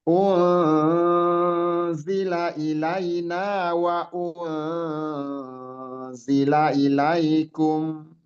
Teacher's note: Samar artinya ikhfa itu samar, samarnya zai, samarnya nun yang sukun ya. Nun sukun itu harus samar, jadi jangan sampai nggak dibaca tapi posisi lidah kita bersiap-siap untuk masuk ke makhraj huruf zai yang di depannya ya